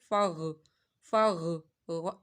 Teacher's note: غین کو حروف مستعلیہ ہے، موٹا پڑھنا ہے، حلق کے اوپر والے حصے سے